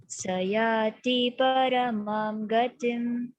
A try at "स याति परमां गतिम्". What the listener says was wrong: This T is short. So sayati paramam gatim.